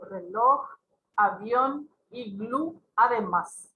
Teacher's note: Las agudas son aquellas cuya última sílaba es la tónica, se carga la voz en la última sílaba